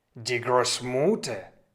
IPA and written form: diː ˈɡʀoːsˌmʊtɐ (die Großmutter)